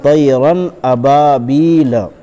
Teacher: یا مدہ کو ایک الف کے برابر کھینچ کر پڑھیں گے